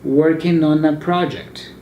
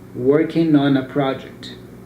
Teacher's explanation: Remember, I don't pronounce the G, so you can cut it out. · you join the N sound of the ing word with the vowel sound that comes after it. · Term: ing ending